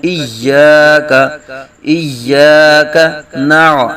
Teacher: یا مشدد ہے، سختی سے پڑھیں گے ذرا رک کر